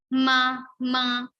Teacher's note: So this is called nasal consonant because we are using our nose also. The place we use to pronounce those the other elements of the same group, and also we use nose.